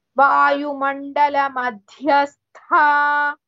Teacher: Wherever the word Madhyastha comes, the Dha is Mahaprana as well as Tha with Sa is also Mahaprana